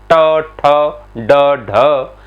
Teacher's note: मूर्धन्य है, यानी जीभ ऊपर की तरफ उठती है, फिर एकदम से नीचे की तरफ मुड़ जाती है, ट, ठ, ड, ढ, इस वजह से इसे हम बोलेंगे मूर्धन्य।